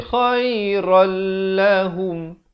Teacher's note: Di sini idgham bila gunnah. Asalnya khairan, tapi bila datang lam jadi khairal lahum.